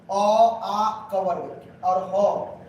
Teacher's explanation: याद करिए अ आ क वर्ग और ह किससे बोलते हैं? कंठ से।